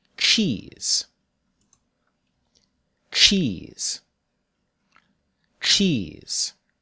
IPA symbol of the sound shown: tʃ